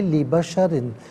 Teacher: بشرن میں را کے نیچے 2 زیر کی تنوین ہے، اسے باریک کر کے پڑھا جائے گا